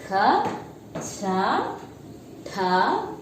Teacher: See, when I am saying ha sound is coming in last.